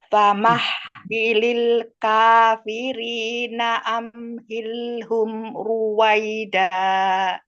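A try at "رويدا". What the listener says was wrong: Nah, yang masih PR roknya Bu masih belum tebal itu. Kalau pas sendiri begini tadi bisa ya, pas ru ru ru gitu bisa. Tapi kalau disambung dengan lafat yang lain, di sini iya berubah jadi tipis. Berarti kurang ini ya, kurang konsisten.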